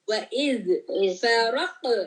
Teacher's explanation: یہ قلقلہ ہے قاف کے اوپر, آپ کے باؤنسنگ بیک ساؤنڈ ہونا چاہیے. and the ra is heavy, ra.